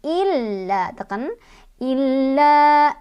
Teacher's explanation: la-nya mad tobi'i karena ada fathah ketemu sama alif, dibaca panjang 2 harokat